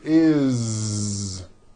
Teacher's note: It doesn't matter that it's spelled with an S, it's never is, unvoiced, never. It's always is with a voiced Z.